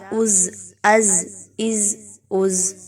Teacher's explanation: حمزہ زبر زا از، اس میں سیٹی کی آواز کو لائیں گے، کیونکہ یہ زا ہے، اس کو دال سے مشابہت نہیں دینی۔